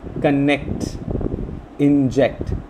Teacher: Similarly, words start ending with ct, connect, inject. So we find the second syllable of these words to be stressed